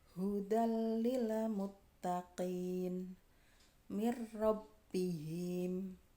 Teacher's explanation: Nah, hudal lil muttaqin dan mir rabbihim memasukkan tanpa disertai dengung. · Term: idgham bilagunah